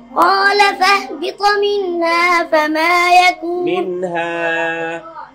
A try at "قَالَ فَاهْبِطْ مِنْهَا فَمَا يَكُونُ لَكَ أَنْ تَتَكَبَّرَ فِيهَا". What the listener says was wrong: منها ها যখন মুখ দিয়ে না বের করা হয় তখন নাক দিয়ে যাচ্ছে এজন্য মুখটা খুলতে হবে منها